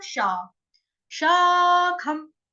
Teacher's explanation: स्वर को आपको थोड़ा सा दीर्घ करना है